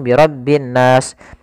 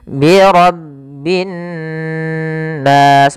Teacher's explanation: Pada lafal nun sendiri di sini ada hukum tajwid berupa bacaan gunnah, yaitu kita menahan suara nunnya sepanjang 2 harakat